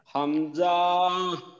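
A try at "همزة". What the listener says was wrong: না, হামজা টান ছাড়া। এক আলিফ যদি টানা যায় তাহলে ভালো আর কি।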